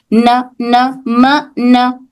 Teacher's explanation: जबान का किनारा ऊपर की आगे के दांतों के जड़ को टच होगा।